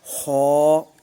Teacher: خو چونکہ حروف مستعلیہ میں سے ہے لہذا اس کو بھی پر پڑھا جائے گا